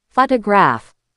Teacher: The stress is on the first syllable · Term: word stress